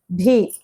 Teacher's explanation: భి అనేది మహాప్రాణక్షరం కదా